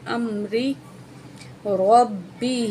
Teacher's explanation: با کو سختی سے پڑھیں گے کیونکہ اوپر تشدید ہے